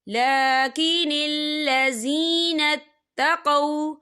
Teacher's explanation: یہاں پر واو لین ہو رہا ہے، واو ساکن ہے، واو ساکن سے پہلے زبر ہے، تو ہم یہاں بالکل نہیں کھینچیں گے